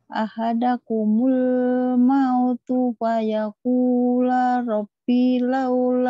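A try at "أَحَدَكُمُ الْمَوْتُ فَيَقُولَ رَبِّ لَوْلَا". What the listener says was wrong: Ahadakumul mautu fayakula rabbi laula akhartani. Ini kayaknya kakak harus agak-agak mutus-mutus dulu karena agak-agak itu nyamber-nyambernya. Jadi di sini mil qabli ayyati ya ahadakumul maut.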